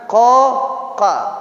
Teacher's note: Ko dan ka dia sama, pangkal lidah, tetapi yang membedakan nanti adalah sifatnya.